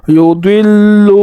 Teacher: ضاد کو پر پڑھیں گے اور اس کو لام کے ساتھ ملا کر پڑھیں گے